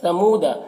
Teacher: یہاں پر واو ساکن سے پہلے پیش ہے تو واو مدہ ہوا، اسے ایک الف کے برابر کھینچ کر پڑھیں گے